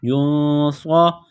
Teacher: صاد کو موٹا کرنا ہے، سیٹی کی آواز پیدا کرنی ہے